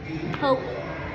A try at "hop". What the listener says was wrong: And there's no E making that the long vowel, right?